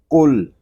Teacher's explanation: قاف یہ زبان کی جڑ اور تالو کے نرم حصے سے ادا ہوگا، یعنی حلق کے درمیان جو گوشت کا چھوٹا سا ٹکڑا لٹک رہا ہے جس کو ہم قوا کہتے ہیں، تو وہاں سے ٹکرا کر اس کی آواز نکلے گی، قل۔